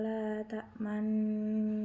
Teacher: nun dibaca ismam atau mencucu